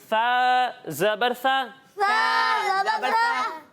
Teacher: पुर यानी मोटा करके पढ़ते हैं। और फिर जब हम सा की अदायगी करेंगे तो इसमें सीटी की आवाज़ ही नहीं आएगी।